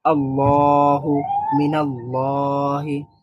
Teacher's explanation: দ্বিতীয় যে লামটা, সেখানে সবসময় এক আলিফ টান হয়